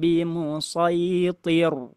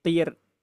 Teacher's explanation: Cuman huruf ra-nya itu jangan ditebalin.